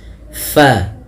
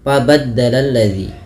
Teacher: salah satu sifatnya yaitu dia hams mengalirnya nafas Fa hati-hati di dalam melafalkannya jangan sampai dia terbaca dengan pabaddaladzi